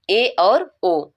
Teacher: जिन स्वरों के उच्चारण में मुख द्वार आधा बंद रहता है उसे हम अर्ध समृत कहते हैं अब जैसे ए और ओ